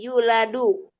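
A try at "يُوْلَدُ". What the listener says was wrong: Nam yuladu.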